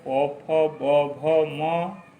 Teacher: पवर्ग ओष्ठ से बोला जाता है